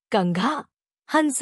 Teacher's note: इसे अनुस्वार कहते हैं। इसका उच्चारण नाक से होता है